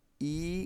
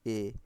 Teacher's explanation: করো, ই, এ, ই, এ, ই, এ, এভাবে উচ্চারণ করো, দেখো ই উচ্চারণ করে যেমনটা ফাঁকা হচ্ছে, এ উচ্চারণ করে, এ উচ্চারণ করলে আরেকটু বেশি ফাঁকা হবে , দেখো ই, এ, ফাঁকা হচ্ছে একটু বেশি, তার মানে এখানে